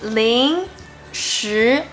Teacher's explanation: are the second tone, the rising tone. This tone is like you are asking a question.